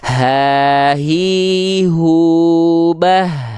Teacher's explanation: h besar makhrajnya dari aqsol halqi Apa itu aqsol halqi halqi itu artinya adalah tenggorokan paling bawah